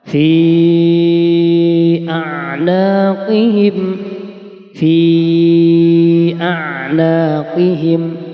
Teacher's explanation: maka bacaan Mad Jaiz munfasil ya harus dibaca panjang lima harakat